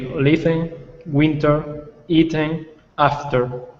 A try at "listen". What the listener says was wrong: Perfect. Well done. This is really a silent T, so it's pronounced listen.